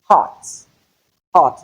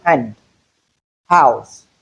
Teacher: the sound, the glottal sound only occurs at the beginning of syllables. You cannot have this as a coder.